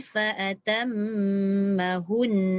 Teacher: Tapi fa'atam kena dengung 2 harakat dulu. Baru masuk hun. Dan hun tu masuk nun tu.